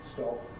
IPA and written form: stɒp (stop)